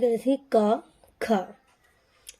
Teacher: ऐसा लगता है कि जो गले के अंदर से ही आवाज आ रही है